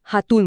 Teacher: गेला आणि फक्त उरला >> हो याचं कारण असं आहे की अ हा एक अतिशय तटस्थ आणि कमकुवत स्वर आहे